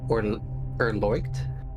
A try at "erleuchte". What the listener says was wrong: Close enough. erleucht. Oh, it is the E, it's erleuchte.